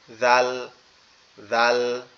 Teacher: জালটা হচ্ছে আমাদের এই জিহ্বার আগা সামনের দুই দাঁতের আগার সঙ্গে লাগবে